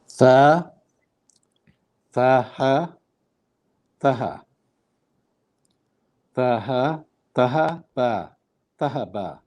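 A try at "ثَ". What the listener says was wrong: Ahsant.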